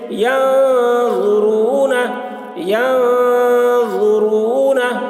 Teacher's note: نون کے اوپر زبر ہے، زبر کو جلدی پڑھیں، تھوڑا بھی نہ کھینچیں